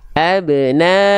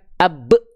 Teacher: Bukan dibaca abna, tapi abna, pantulannya ingat. Pantulannya ringan karena qalqalahnya sugro. Tengah kalimat, bukan pada saat kita wakof. Maka pantulannya ringan. Abna, bukan ab.